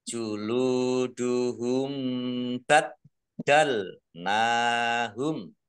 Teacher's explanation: Mim sukun bertemu dengan huruf ba, bacaan ikhfa safawi. Satu-satunya hukum mim sukun bertemu dengan huruf ba, namanya ikhfa safawi, dibaca samar-samar.